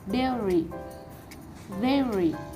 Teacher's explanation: The stress is located on the first syllable